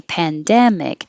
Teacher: i underlined dem because that is the stressed syllable within that word